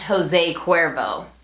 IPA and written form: ˌhoʊˈzeɪ ˈkʊeɹvoʊ (José Cuervo)